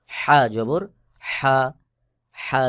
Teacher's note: হলকের মধ্যে মধ্যখান থেকে একটু চাপ দিয়ে উচ্চারণ করতে হয়